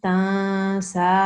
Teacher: We pronounce it with a light nasal sound, okay, and slight elongation. So instead of saying tansa, you will say tansa, like that, okay?